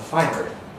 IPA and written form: ˈfaɪnɚ (finer)